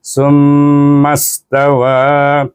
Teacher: Dan summas, baik sa wa mim, mim bertasydid wajib bergunnahkannya dengan dengung 2 harakat. Dan kemudian bertemu dengan hamzah wasal, diwasalkan dengan huruf sin yang sukun, summas.